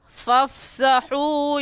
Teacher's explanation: واو ساکن سے پہلے پیش آ گیا ہے تو واو مدہ، اور واو مدہ کو 1 الف کی مقدار کھینچتے ہیں